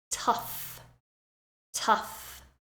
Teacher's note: this time the GH is pronounced like a f